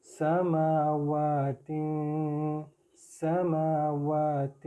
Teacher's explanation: سین کی آواز میں سی ٹی کی آواز آنی چاہیے